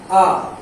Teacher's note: मध्य स्वर की बात कर रहे हैं, आप बोलिए आ, आप आ बोलेंगे तो क्या होगा, आ, ऐसे लगेगा कि जीभ के बीचों बीच से आ का उच्चारण हो रहा है, इसलिए आ क्या हो गया, ये मध्य स्वर हो गया।